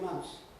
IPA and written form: mʌns (months)